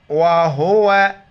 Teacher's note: हा को गले से नहीं करेंगे बल्कि जैसे मुंह से हवा निकालते इसी तरह